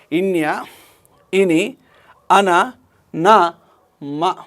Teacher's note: నాసిక అంతర్భాగం నుంచి శ్వాస నిర్గమించినప్పుడు పుట్టేటువంటి ధ్వనులను అనునాసికాలు అంటారు